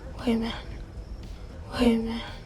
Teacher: So the A reduces to just a schwa sound, We have another glottal T in minute, and all three words link together.